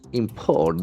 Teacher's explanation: If it is a verb, import, the accent falls on the second syllable.